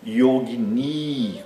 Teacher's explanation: Yogini tem duas sílabas longas, a primeira e a última. · Existe também o feminino dessa palavra, que é yogini, com I longo no fim.